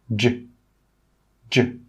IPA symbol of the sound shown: dʒ